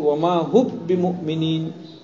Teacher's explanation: अच्छा, इदगाम कीजिए, आप क्या पढ़ेंगे, वमा हुम बिमुमिनीन में इदगाम करेंगे तो वमा हुब बिमुमिनीन, क्या पढ़ेंगे, वमा हुब, हुब हुम की मीम को बा से बदलकर बा को बा में दाखिल करेंगे तो पढ़ेंगे वमा हुब बिमुमिनीन।